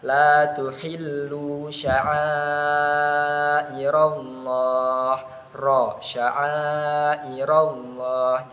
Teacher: Jadi ra-nya dibaca tebal. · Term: tafkhim